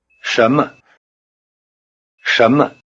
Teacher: In normal speech, the tone pattern of 什么？ sounds rather like a rising tone over both syllables.